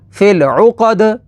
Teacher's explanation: وقف تام کی وجہ سے دال کو ساکن کر دیں گے۔ دال حروف قلقلہ میں سے ہے تو یہاں پر قلقلہ ہوگا